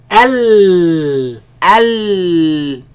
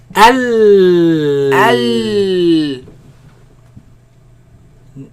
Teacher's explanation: The sound escapes on the sides. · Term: lam